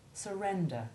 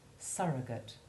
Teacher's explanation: the U in the first of each pair is the unstressed short U2 and the U in the second is the stressed short U3, surrender and surrogate.